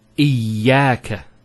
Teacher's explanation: Notice the ya gets a double vowel because of the shadda there. Iyaka. It's not iyaka, iyaka.